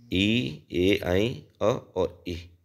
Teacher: जिन स्वरों के उच्चारण में जीवा का अग्र भाग सक्रिय होता है उसे अग्र स्वर कहते हैं